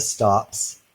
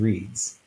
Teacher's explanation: The s is there because it's preceded by a voiceless consonant. The z is there because it's preceded by a voiced consonant. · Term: alternation